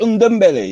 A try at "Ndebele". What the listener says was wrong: No, Ndebele. Ndebele. Like N and D sounded like they sound the same, like Ndebele. So the N and D are together. Ndebele.